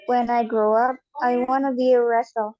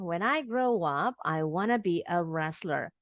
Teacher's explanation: Sekarang sudah disambung nih when I grow up-nya. Sekarang want to-nya jadi wanna.